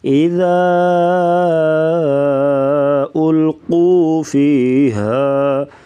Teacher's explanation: ہا کی جو آواز ہے یہ گلے سے نکالیں گے